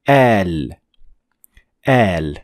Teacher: And this sign on top of alif is called med, which means extending. So you're going to pronounce alif, but a little bit longer than usual.